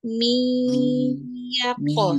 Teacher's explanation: Kalau nun bertemu dengan ya, Umi tidak baca lagi min, tapi masuk ke dalam huruf ya. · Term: idgham bi gunnah